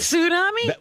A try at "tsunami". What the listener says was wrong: tsunami. Tsunami. That's the way it's supposed to be. Tsunami. Yeah, there's a T there.